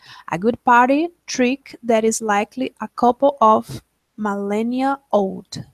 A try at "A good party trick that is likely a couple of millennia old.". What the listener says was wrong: Great job, yeah.